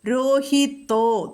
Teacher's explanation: തോ എന്ന് പറയണം ത മൃദുവാകരുത്